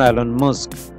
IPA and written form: ˈiːlɒn ˈmʌsk (Elon Musk)